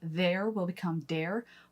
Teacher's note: you will hear some dialects in America soften that TH to a D